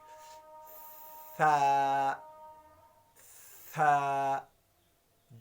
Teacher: ثا آپ کی زبان اوپر والے دانتوں کے سرے کے ساتھ لگ جائے گی، اتنی سی تھوڑی سی باہر نکالنی ہے